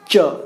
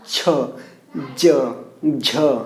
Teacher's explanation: च वर्ग जो है वो तालु से बोले जाते हैं, तालु से।